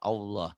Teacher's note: Ternyata itu lafzul jalalah, ada tafkhim, jadi ada W-nya, kayak ada W-nya jadi Allah.